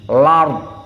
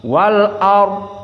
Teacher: Maka di qiraah Wars di sini berbeda dengan qiraah jumhur di naql, di mana lam bertemu dengan hamzah maka hamzahnya dihapuskan. Lam sakinah bertemu dengan hamzah, hamzahnya dihapuskan, maka harokat hamzah al a fathah itu disisakan, dinaql.